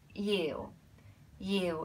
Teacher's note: Yiu is Y-I-U. It's a mid-tone, just a flat yiu.